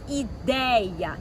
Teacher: Então o E é a vogal e o I é a semi que apareceu para dar suporte.